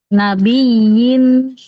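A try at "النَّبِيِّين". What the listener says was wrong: Ya, bagus. Cuma tinggal sedikit kasrah sempurnakan. Nabiyin.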